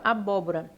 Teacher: A sílaba mais forte é o bó, né? Esse bó aqui ele está acentuado e é a antepenúltima sílaba, então é uma proparoxítona.